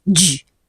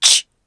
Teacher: The place and manner of articulation are similar, only that j is voiced, ch is voiceless.